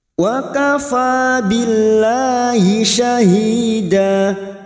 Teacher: huruf fa alif kecil di atas atau fathah berdiri, 2 harokat kita panjangkan mat tabi'i. Wa kafa billahi, lam jalalah yang sebelumnya kasroh kita baca tarkik atau tipis. · Alif kecil di atas atau fathah berdiri dua harakat kita panjangkan